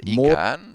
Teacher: I'd pronounce it Morrigan with the emphasis on the first syllable. Mor Think of it like more Morrigan.